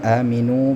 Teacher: aminu panjang dua harakat lagi disebut dengan mad thabi'i